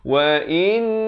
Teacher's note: dengungkan dahulu dua harakat wajibul gunnah, baru masuk na kafi di hujung lidah.